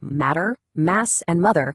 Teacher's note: The sound continues from your lungs without stopping. But it gets bounded right there at your lips.